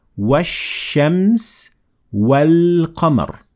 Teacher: In the first example, I completely dropped ال همزة وصل plus لام, and in the second, I only dropped the همزة وصل and I pronounced the لام. Because the first one is sun al and then the second one is a moon al.